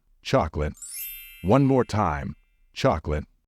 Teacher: you should pronounce it as if there is no letter o in the middle